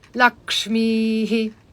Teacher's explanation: you roll the tongue back and the bottom of the tongue touches the Dome of the pallet and it's a siblin so it's aspirate Maha Prana big breath